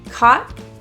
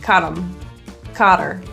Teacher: So him will sound like caught him, or her might be caught her. This reduction or deletion of the H only happens if you're linking very smoothly. So if you have a pause, caught, it won't work.